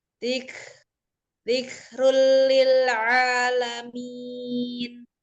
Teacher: Ada kaf yang bersukun itu mempunyai sifat al-hams yaitu mengalir dan siddah yaitu tertahan. Jadi dibacanya mengalir nafas bagian dan tidak dipantulkan. Dzikrul lil, ada domah tanwin bertemu dengan lam idgham bila guna, maka dibacanya tanpa dengung dan langsung dilebur ke huruf lam. · ada domah tanwin bertemu dengan lam idgham bila guna, maka dibacanya tanpa dengung dan langsung dilebur ke huruf lam. Lil a, itu ada mad tabi'i alif dibaca 2 harokat. · Lil alamin itu ada mat arid li sukun dibaca 2, 4 atau 6. Mat arid li sukun yaitu mat yang bertemu dengan satu huruf yang disukunkan karena wakof.